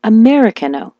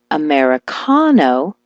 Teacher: switch the stress to the ka